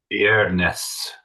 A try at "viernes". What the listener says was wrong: Yeah, good. Viernes. Viernes. Good. So again, emphasizing that sound of the I, E, and then the E is an E.